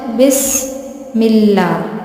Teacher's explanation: سین سیٹی سے پڑھا جائے گا